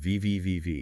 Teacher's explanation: For V, like in your top teeth, gently touch your bottom lip. And you should feel a vibration